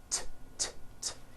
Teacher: It's unvoiced. Your vocal cords are not vibrating.